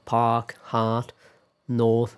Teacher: So in American English, the R after a vowel is almost always pronounced. In most varieties of British English, however, the R after a vowel is usually not pronounced.